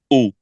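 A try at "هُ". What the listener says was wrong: Not ooh. If you say ooh, your breath is not coming out. Your breath also has to comes out from your mouth.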